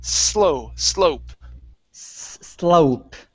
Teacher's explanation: give me an unvoiced s